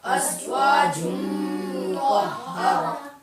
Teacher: اور میم مشدد میں گننا بھی ہوگا